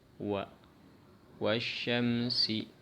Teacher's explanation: Makhrajnya waw di antara dua bibir. Syafatain kalau bahasa Arabnya.